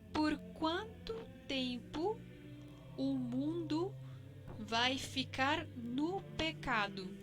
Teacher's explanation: En todas estas palabras y en muchas otras también van a encontrar que la O se cambia por un sonido de U cuando está al final de una palabra.